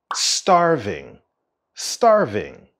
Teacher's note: the stress of the word starving is at the beginning